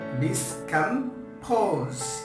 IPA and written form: dɪskəmˈpəʊz (Discompose)